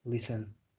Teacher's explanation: Also, many silent letters like the word listen. You don't say the T.